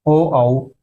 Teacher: कंठोष्ठ कंठ और होठों की सहायता से ओ औ स्वर बोले जाते हैं।